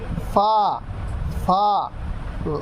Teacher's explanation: নিচের ঠোঁটের পেট সামনের উপরের দুই দাঁতের আগার সঙ্গে লাগাইয়া ফা নিচের ঠোঁটের পেট অর্থাৎ এই যে পেট ভিতরের অংশ নিচের